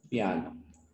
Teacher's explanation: la a es el núcleo y esta vocal I no llega a ser el núcleo se conoce como semivocal